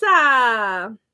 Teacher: you put your tongue to the roof of your mouth and you make it loose and you let the air bounce your tongue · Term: trill R